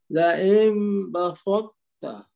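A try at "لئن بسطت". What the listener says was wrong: Yang pertama macam dah okey sikit, yang kedua lari sikit. Yang kedua sin dia jadi so. Jaga sin jangan jadi so.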